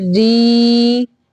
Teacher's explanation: جب را کے نیچے کھڑی زیر آئے گی تو وہ را باریک ہوگا